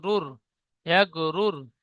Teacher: গয়নের উপরে সাকিন এসেছে, সাকিন যুক্ত অক্ষরকে ডান দিকে অক্ষরের সাথে মিলিয়ে পড়তে হয়। রর উপরে পেশ এসেছে, তাই রকে পুর করে পড়তে হয়।